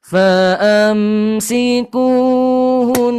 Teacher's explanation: Ketika Bapak Ibu berhenti pada nun yang bertasydid, jangan lupa gunnahnya ditahan sampai 2 harokat gunnah saja. Contohnya, fa'amsikuhun.